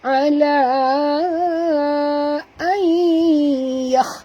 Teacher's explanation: nun mati bertemu ya, kena sorokkan bunyi nun ke dalam ya, sorok habis ya. 100%, 100% disertai dengung, idgham ma'al gunnah ya hukumnya.